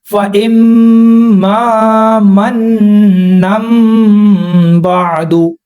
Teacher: تنوین اور نون ساکن کے بعد جب با آئے گا تو وہاں پر میم کی آواز لگائیں گے · یہاں پر نون ختم نہیں کر دینا، نون کی آواز رہے گی، تنوین کے اندر جو نون کی آواز ہے اس کی جگہ ہم نے میم کو لگانا ہے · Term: اقلاب